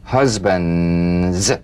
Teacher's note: pressed the tongue against the upper gum Ridge for the D drumbeat and peel the tip down a bit as the Z vibrates just before the tongue springs away